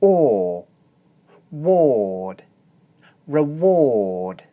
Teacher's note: to make this sound, I keep my chin low and push my lips forward into a small circle. This is very similar to the mouth shape we used for the consonant sound w. · The next vowel is the long monophthong or. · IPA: /ɔː/